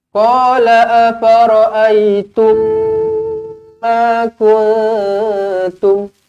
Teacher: Mim kosong bertemu mim sabdu, dengungkan 2 harakat. Jumpa dengan mim sabdu, rapatkan bibir.